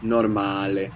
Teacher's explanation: So we have the accent on the second last syllable, no? On the A, normale. And the vowels, we're pronouncing them clearly, not like English when we say normal.